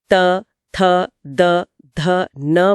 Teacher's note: इसके बाद यात्रा पहुंचती है दांतों पर। त वर्ग त, थ, द, ध, न बोलते समय जीभ की नोक सीधे ऊपरी दांतों के पिछले हिस्से को स्पर्श करती है।